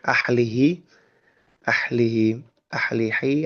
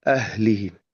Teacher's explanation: Nah, ketika masih mungkin sebagian sahabat mungkin ahlihi, ahlihi, ahlihi atau gitu ya, masih huruf H tenggorokan tengah, coba perdalam lagi. Pastikan pengucapan huruf H itu dalam, tenggorokan dalam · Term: H gede